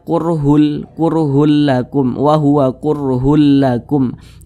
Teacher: cara membacanya itu dengan cara memasukkan kemudian tidak disertai dengan dengungan · Jadi bunyi tanwin ini dimasukkan ke huruf lam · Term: idgham bila ghunah, idgham bila gunnah